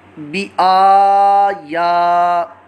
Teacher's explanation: बा के नीचे हरकत है और आगे हमज़ा के ऊपर खड़ा ज़बर है, या पर भी खड़ा ज़बर है, इन दोनों को एक अलिफ दो हरकत के बराबर लंबा करेंगे। खड़ी हरकत हुरूफ़ मद्दा के कायम मुकाम है, इसलिए इनको लंबा करेंगे।